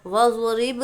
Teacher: तो ज़ाद जब हम अदा करेंगे तो हमारी ज़बान की करवट को ऊपर के दाढ़ों से लगाएंगे, या तो दाएं जानिब की दाढ़ों से लगाएं या बाएं जानिब की, आपको कहाँ से आसानी हो उस तरफ हम लगाएंगे। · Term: ज़ाद का मखरज